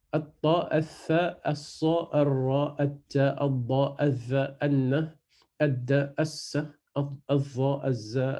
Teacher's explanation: Le lem, il ne se prononce pas et on rajoute toujours une shadda dans le shin, dans la lettre d'après, qui vient après l'article défini.